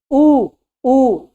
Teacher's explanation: फिर आएंगे ऊ, अब होंठ पे प्रकार बन रहा है, वृत्त में बन रहा है। अगर आप होंठ को गोल ना करो तो आप ऊ का उच्चारण नहीं कर सकते हो, इसलिए ऊ क्या है, वृत्ताकार मुखी है।